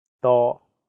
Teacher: The first character is in high flat tone, first tone.